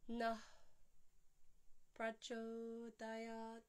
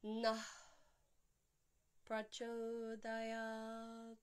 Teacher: prachodayat, ending with a dental T